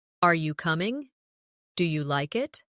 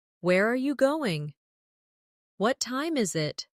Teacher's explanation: Another important element is intonation when asking questions. In English, our voice usually rises at the end of a yes or no question. For example, "Are you coming?" "Do you like it?" But for information questions, those starting with who, what, when, where, why, how, the tone often falls at the end.